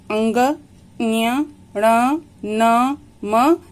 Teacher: इन पांचों का उच्चारण करते समय इन स्थानों के अलावा नासिका की भी सहायता लेनी पड़ती है। देखिए कैसे नाक से आवाज आती है इन वर्णों को जब हम बोलते हैं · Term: नासिक्य